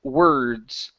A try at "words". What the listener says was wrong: So a little bit more R. So you're saying, it's almost like you're saying the word worse.